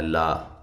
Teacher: لا ایک الف کے برابر لمبا کرنا ہے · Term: الف مدہ